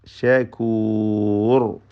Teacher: ശകൂർ റായിൽ തഫ്ഖീം ചെയ്തുകൊണ്ട് തടിപ്പിച്ച് ഉച്ചരിച്ചുകൊണ്ട് നിർത്തുക